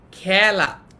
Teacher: এটা হচ্ছে এ ধ্বনির বিবৃত উচ্চারণ